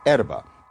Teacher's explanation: Italian dropped the H like a good romance language does